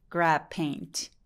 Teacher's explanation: 입술을 다문 김에 P 발음 그냥 내는 겁니다.